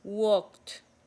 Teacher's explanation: cuando la palabra termina en K, esa ED se convierte en una T.